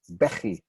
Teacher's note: It's unusual also in that the first syllable gets the stress